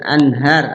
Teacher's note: anhar ada nun mati ketemu ha. Idhar dibaca jelas nunnya karena bertemu dengan salah satu huruf idhar, ha di antaranya.